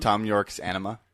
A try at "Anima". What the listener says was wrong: enunciate it so we know you're saying anima and not enema. Because that's two different things.